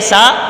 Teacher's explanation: सा का मखरज जबान का सिरा और ऊपर के दांतों के अंदरूनी किनारे से सा अदा होता है। जबान का सिरा ये और ऊपर के दांतों के अंदरूनी किनारा अंदरूनी जो किनारा है उससे जबान का सिरा लगता है तो ये सा अदा होता है।